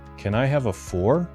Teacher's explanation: There is no fork on the table, so you ask the waiter, "Can I have a fork?" But the K at the end never comes out.